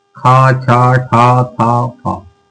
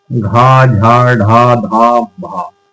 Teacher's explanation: ज्यादा वायु मुंह से बाहर निकलती है तो महाप्राण कहलाते हैं